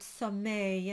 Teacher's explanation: it's an a sound with a little e at the end